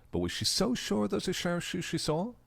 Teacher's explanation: fluctuating intonation is to show suspicion